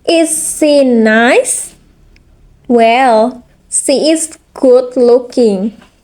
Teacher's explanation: Fall rise intonation. Used for politeness, hesitation, or hidden meaning.